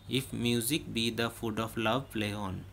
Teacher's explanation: if is unstressed, mu is stressed, sick is unstressed, be is stressed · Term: iambic